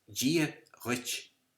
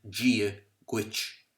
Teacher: there's a difference in the lip rounding between the Irish ch, when it is pronounced, and the English ch.